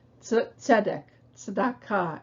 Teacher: what English lacks is that ts sound from tzadi in the beginning of a word. It can only be found in the middle or at the end of a word.